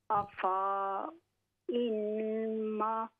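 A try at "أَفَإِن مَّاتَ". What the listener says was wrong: अफ़ा, फ़ा को लंबा ना करें, ये अलिफ साइलेंट है। अफ़ा इम्मात,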